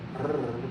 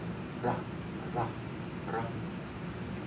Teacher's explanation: The closest would be like a rolling R in Spanish, and here they have the D as in ladder, and so it's a simple roll of the tongue. It's not a continuous roll of the tongue, not a r, but a ra, ra, ra.